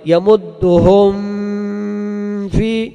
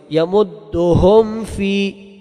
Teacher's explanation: دلته به اظهار کېږي دلته به د میم ساکن اظهار کېږي ځکه چې د میم ساکن نه بعد د با او میم نه علاوه بل حرف راغلی دی